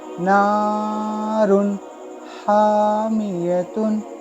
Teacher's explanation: यहाँ है हा, तो हा जो है वो हुरूफ हल्की में से है, इसलिए हम इस दो पेश की तनवीन को ज़ाहिर करके पढ़ना है। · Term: इजहार